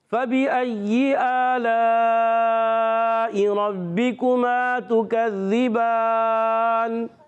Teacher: با پر کھڑا زبر ہے، ایک الف کھینچ کر ادا کریں گے. وقف کرنے میں نون ساکن ہو جائے گا، وقف بالاسکان ہو جائے گا. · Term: مد عارض